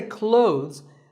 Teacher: silent here well first of all this word is not cloths when we say clothes the th in the middle can often be silent